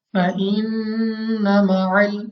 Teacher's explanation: نون مشدد غنہ کر کے پڑھیں گے، غنہ کی مقدار بھی 2 حرکات، یعنی ہم نے اس کو کھینچ کر لمبا کرنا ہے، یعنی کس طرح، فَإِنَّ مَعَ یعنی اس کو ہم نے کھینچ کر پڑھنا ہے، 2 سیکنڈ تک ہم نے اس کو بھی لمبا کرنا ہے۔